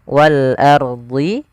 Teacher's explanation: Kemudian wal ardihi ini ada alif lam qamariah yaitu alif lam yang tertulis tapi dia dibaca huruf lamnya dengan jelas